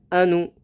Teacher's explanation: حمزہ پر جزم ہے تو جھٹکا دے کر پڑھیں